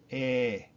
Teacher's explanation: Spanish vowels are very pure, like just the E by itself is pronounced eh. You want it to sound like English, put a Y or an I after it.